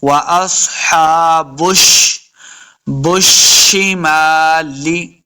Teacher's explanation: وَأَصْحَابُ الشِّمَالِ، با کو شین کے ساتھ ملائیں گے، شین مشدد ہے، اور جب شین کو پڑھیں گے تو ہم نے سٹی کی آواز دینی ہے